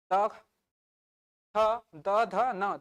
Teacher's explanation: जीभ को देखो दांत को टच कर रहा है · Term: दंतव्य